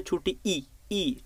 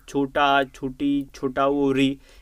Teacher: ये चारों के चारों होते हैं ह्रस्व स्वर, क्योंकि इनको बोलने के लिए बहुत कम टाइम लगता है